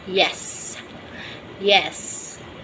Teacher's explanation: roof of the mouth immediately after alveolar reach it's not movable the front part of the tongue moves toward the hard palate